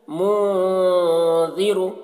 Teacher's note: اخفا میں سے ہے، تو یہاں پر بھی اخفا ہوگا، اور نون کی آواز کو ناک میں چھپا کر ایک الف کی مقدار تک کھینچیں گے